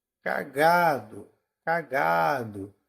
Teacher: Qual é a sílaba tônica de cagado é o g a penúltima né